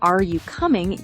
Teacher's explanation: Are you coming uses rising intonation as it's a yes-no question.